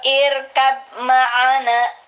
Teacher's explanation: Tapi kalau sukun, tapi sebelumnya berharokat kasroh, roh ini dibaca tipis.